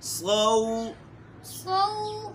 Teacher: لین ہے تو اس میں ہم نے نرمی پیدا کرنی ہے، صاد موٹا ہے اس کو تو ہم موٹا پڑھیں گے، لیکن حروف لین ہے اس میں ہم نرمی پیدا کریں گے